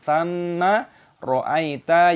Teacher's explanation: Tsamma, mimnya ada tashdid, dibaca ghunah, dinasal